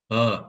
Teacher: it's a neutral vowel schwa the vocal tract is neutral laryngeal configuration neutral